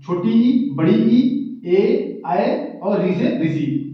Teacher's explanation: अग्रस्वर का मतलब होता है ना जीभ का जो अगला वाला हिस्सा है, यानी ऐसा स्वर जिसके उच्चारण में जीभ का आगे वाला भाग कार्य करता है, उसे अग्रस्वर कहते हैं